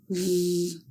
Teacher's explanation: To make the sound of the letter V, /v/ air is blocked by the upper front teeth in light contact with the lower lip. /v/ is a voiced sound.